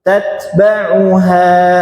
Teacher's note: kalau berhenti di ha panjang h-nya dua harakat